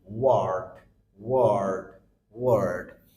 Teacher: লাস্টে আমাদের ডি এবং ডি এর আগে র, তার মানে আর রয়েছে, এই আর এর উচ্চারণ হচ্ছে না।